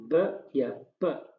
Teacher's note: ब या प बोलेंगे तो हमारे दोनों होंठ इस्तेमाल होंगे, और ये होगी प्लेस ऑफ आर्टिकुलेशन, ये दोनों होंठ इस्तेमाल होंगे। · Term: बायलेबियल